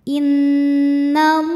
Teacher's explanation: Mad Thobi'i muqaddar karena ada fathah panjang di atas huruf lam cara membacanya dipanjangkan lamnya dua harakat